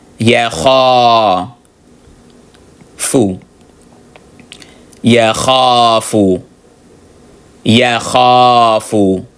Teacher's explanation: Then the kha, of course, is elongated because you see the alif here.